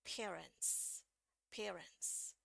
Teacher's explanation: T ini adalah voiceless consonant, dia konsonan yang nggak pakai bunyi dari pita suara, maka di sini bunyinya tetap S, ya, bukan pakai Z.